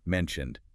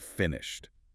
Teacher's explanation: the ed on mentioned sounds like a D, but on finished, it sounds like a T.